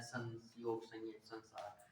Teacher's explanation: अनुस्वार का उच्चारण नासिका से होता है